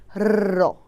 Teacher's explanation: জীব একাধিকবার দ্রুত দন্তমূলকে আঘাত করে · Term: কম্পনজাত ধ্বনি